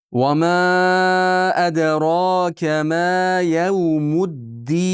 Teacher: Bu yerda va ma da 4-5 harakat miqdor cho'zamiz. Munfasil. Va ma aniq bilinsin.